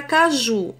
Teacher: a sílaba mais forte é ju. Logo, a palavra caju é oxítona, porque é a última sílaba mais forte.